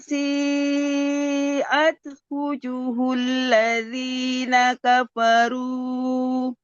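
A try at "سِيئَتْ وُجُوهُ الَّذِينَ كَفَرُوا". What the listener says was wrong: Ulang. Wujuhul ladzina panjang.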